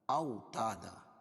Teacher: او واو ساکن سے پہلے زبر ہے واولین، اس کو نرم آواز کے ساتھ جلدی پڑھیں گے